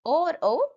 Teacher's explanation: ओ के उच्चारण में कंठ और ओष्ठ की सहायता ली जाती है। ओ और औ कंठोष्ठ्य है।